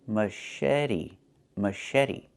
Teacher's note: The CH makes a soft sh sound, like in fish, mush.